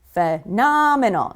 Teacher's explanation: Make sure you know which syllable is stressed. Phenomenal. It's the second syllable, right?